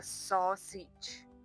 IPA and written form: ˈsɒsɪdʒ (Sausage)